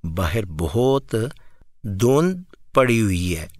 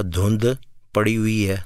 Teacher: میں دال کی آواز باؤنس نہیں ہونے دے رہا